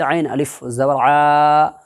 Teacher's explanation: عین الف زبر آ الف مدہ ہوگا، اس لیے کہ الف سے پہلے عین کے اوپر زبر ہے، اس لیے الف مدہ ہوگا. الف مدہ کو ایک الف کے برابر کھینچ کر کے ادا کریں گے